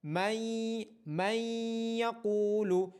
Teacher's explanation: نون ساکن کی آواز آئے گی لیکن وہ کلیئر نہیں ہوگی، وہ یا میں ضم ہو کے آئے گی